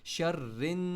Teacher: री को नून के साथ जोर से लगाना है, नून को नाक से निकालना है।